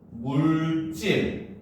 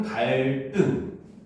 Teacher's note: 리을, 받침 뒤에 이어지는 디귿, 시읒, 지읒은 된소리로 발음을 합니다. 이거는 한자음에만 해당되는 거예요.